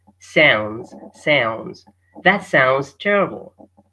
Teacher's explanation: the D is no longer there